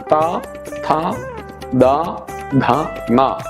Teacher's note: നാവ് പല്ലിന്റെ പിന്നിൽ മുട്ടിയിട്ട് ത ഥ ദ ധ ന അതിനെ ദന്ത്യം എന്ന് പറയും